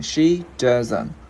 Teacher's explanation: Anh n với t thì t câm ha mọi người ha.